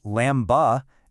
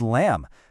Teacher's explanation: It's that B right at the very end. It's completely silent. It's not lamb-ba, it's just lamb. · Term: silent letters